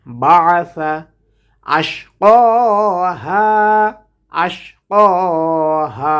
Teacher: আইনটাকে উচ্চারণ করব কণ্ঠনালীর মধ্যখান হতে।